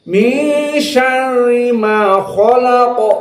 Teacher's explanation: Maka ra muraqqaqah, kha mufakhamah, qaf mufakhamah.